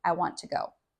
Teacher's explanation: The I is also very very quiet and almost reduced.